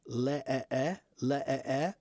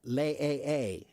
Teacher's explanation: The short E is uh a halfopen mouth. Okay. The long A a is pretty big.